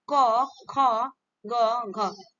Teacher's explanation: कंठ से बोले जाते हैं कंक ध्वनि इनको कहा जाता है सी इज द राइट आंसर